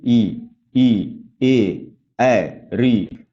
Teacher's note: अग्रस्वर मतलब ऐसे स्वर जिनका उच्चारण करते समय हमारी जिह्वा का अग्रभाग सक्रिय होता है · इनका उच्चारण अगर आप करते समय ध्यान देंगे तो आपके जिह्वा का जो अग्रभाग है उनमें कंपन होता है। तो ये अग्रभाग सक्रिय हो रहा है इनका उच्चारण करते समय, इसलिए ये अग्रस्वर है।